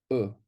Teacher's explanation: Un sheva vocal, c'est un sheva qu'on entend. Donc, c'est un E tout simplement, un E très bref.